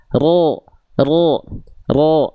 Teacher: Pertama huruf ro-nya masih getarannya terlampau banyak, lalu jangan cuman ro, tapi ro, angkat pangkal lidah. Ya, jadi bunyi vokal o pada huruf tebal, contohnya huruf ro itu bukan karena ro, bukan di-o-kan, bukan sengaja di-o-kan, tapi angkat pangkal lidah.